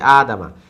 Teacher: আদামা, আতে টান আছে, দামা তাড়াতাড়ি, আদামা।